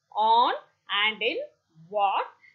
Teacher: The back of the tongue is raised in the direction of the soft palate during articulation, and it is in fully open position. It is a little above the long R sound. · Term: back open rounded